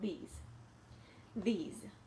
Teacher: things are mine these again we're gonna do the voice test now we have a vibration in our throat now we're using our voice we're using more than just our breath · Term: voiced th